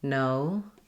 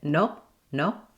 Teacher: if you use your native language O, it'll sound too short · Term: full O diphthong